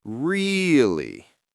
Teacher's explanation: when I say really, I stretch the R a little.